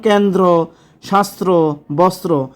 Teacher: শব্দের মধ্যে বা শেষে যুক্ত ব্যঞ্জনের সঙ্গে র ফলা যুক্ত হলে দ্বিত্ব উচ্চারণ হয় না